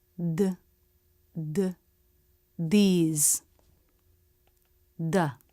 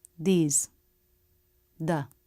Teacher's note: the voiced th can be different when it's in an unstressed quick word like these or the the tongue tip doesn't have to come through the teeth. It can press behind the teeth.